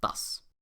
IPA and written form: das (dass)